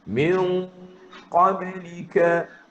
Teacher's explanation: Jadi masa duk dengung min tu, pangkal lidah naik. Sebab nak nunggu, nak sebut huruf qaf tu.